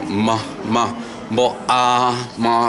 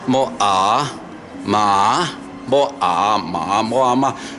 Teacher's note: More is lip together and then the nasal sound, the ends up at the nose, nasal sound. So bilabial lips together, then end up with the nose sound, nasal.